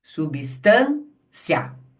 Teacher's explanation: o que que acontece com esse encontro vocálico? Ele é pronunciado de uma única vez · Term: ditongo crescente